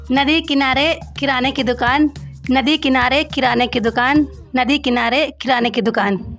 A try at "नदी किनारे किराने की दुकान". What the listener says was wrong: बहुत खूब, बहुत खूब, वेरी गुड।